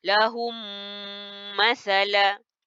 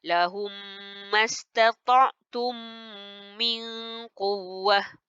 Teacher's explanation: mim mati masuk ke dalam mim yang berbaris ni. Jadi dia seolah-olah satu mim yang bertanda sabdu. Tapi mesti dengung. Kalau kamu tak dengung, tak cukup syarat jadi idgham mislaini.